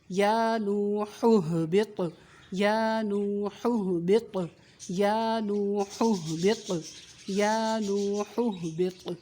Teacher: یا نو ہو, با طا زیر بط, طا کو ہلانا ہے یعنی قلقلہ کرنا ہے